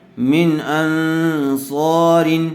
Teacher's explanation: ان، یہاں پر غننے کے ساتھ اخفا ہوگا، اس لیے کہ نون ساکن کے بعد صاد آیا ہوا ہے